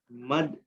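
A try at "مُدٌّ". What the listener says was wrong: Muddun. Itu tanwin ya. Muddun.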